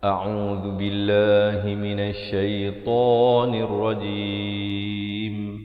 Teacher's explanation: makhrajnya di mana oh makrosnya di Pangkal kerongkongnya di pertengahan kerongkongan dibacakan dengan dua harakat dan di akhir baru dirapatkan mulut bagi menyempurnakan huruf mim